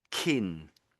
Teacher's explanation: if you're doing it with the front of your tongue touching the roof of your mouth, you end up just getting kin